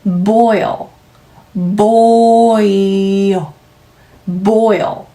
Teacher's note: dark L 마무리 하시는 소리네요.